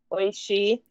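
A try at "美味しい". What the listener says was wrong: Oishi. Yeah, good.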